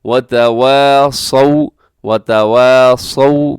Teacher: واؤ سے پہلے زبر ہے، واؤ لین ہے، اور لین کی جو پہچان ہوتی ہے وہ یہ ہوتی ہے کہ اسے آپ مجہول نہیں کرتے، یعنی اس کی خوبی یہ ہوتی ہے کہ اسے آپ مجہول نہیں پڑھتے بلکہ معروف پڑھتے ہیں۔